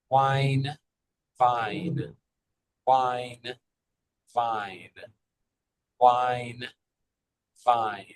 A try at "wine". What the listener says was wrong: Exactly.